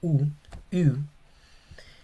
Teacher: se pronuncia como decir una I pero con la boca como una U